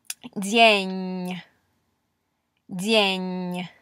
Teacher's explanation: you're going to hear the palatalization on the N, the underlined N, in this word